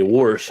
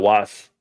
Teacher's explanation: people people in will say warsh instead of wash I mean my dad and aunt and uncles and stuff they all threw an r in there